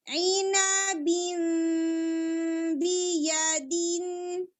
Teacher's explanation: اب یہاں پر تنوین کے بعد با آ رہا ہے, سو اقلاب ہوگا. بین نون کو ہم میم میں چینج کر دیں گے اور بہت لپس کو دبانا نہیں ہے